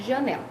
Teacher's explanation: sílaba tônica recai na penúltima sílaba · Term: paroxítona